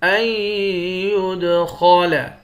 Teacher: یا کو دال کے ساتھ ملا کر دال پر قلقلہ کریں گے